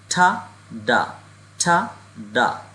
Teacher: দেখেন তখন হচ্ছে আমাদের এই জীবের অগ্রভাগ এবং হচ্ছে উপরের তালু জীবের অগ্রভাগ এবং উপরের তালু দিয়ে প্রোনাউন্স করব